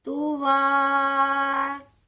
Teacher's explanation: وقف کرتے وقت اسے تو وا پڑھا جائے گا 1 الف کے برابر